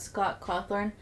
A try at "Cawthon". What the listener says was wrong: You say Thorn? Cawthon. Cawthon. You said Cawthorn.